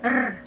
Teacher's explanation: Okay, it is a voice alveolar approximant wherein the tip of our tongue curls back slightly, okay, in the roof of our mouth, just behind the alveolar ridge.